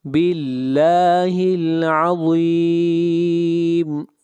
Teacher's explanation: یہاں پر لفظ اللہ کو باریک پڑھیں گے، اس لیے کہ لفظ اللہ سے پہلے زیر ہے